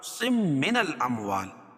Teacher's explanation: تنوین کے بعد ادغام مع الغنہ کے 4 حرفوں میں سے میم ہے تو یہاں غنہ کر کے پڑھیں گے